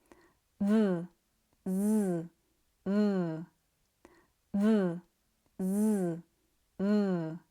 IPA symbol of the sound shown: ð